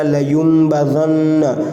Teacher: نون مشدد ہے، گنہ کریں گے